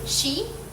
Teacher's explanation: the tongue approaches the hard pallet creating a sh sound as air squeezes through